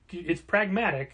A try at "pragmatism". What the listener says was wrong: Pragmatism. Yeah, basically, you take out the C and put an SM at the end, and that's the word.